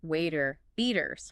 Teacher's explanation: the T in the middle of words like water or butter is often pronounced as a flap T. It sounds closer to a light D.